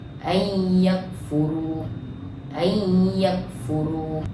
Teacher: Cara bacaannya ialah masukkan bunyi nun kepada huruf selepasnya serta dengung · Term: idgham ma'al gunnah